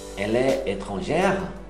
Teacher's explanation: Ela é uma pergunta. Você sobe a entonação.